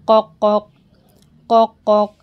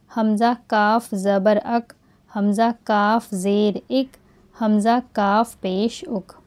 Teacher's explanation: कफ में खटका आता है लेकिन काफ की आवाज नरमी से अदा होगी